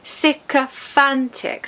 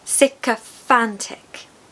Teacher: The third syllable is stressed and it needs to be like fan.